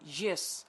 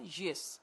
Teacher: a falling tone is emphatic